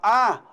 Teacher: quando você fala a, a língua fica bem baixa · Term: vogal baixa